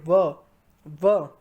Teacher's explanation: दंत और ओष्ठ दोनों लग रहे हैं, दांत और होंठ दोनों का यूज हो रहा है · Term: दंतोष्ठ